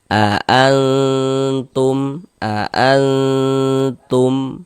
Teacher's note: Jadi di bagian annya itu suaranya itu kita tahan, kita panjangkan sejenak. sepanjang dua harakat kita ghunahkan atau kita dengungkan. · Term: dighunahkan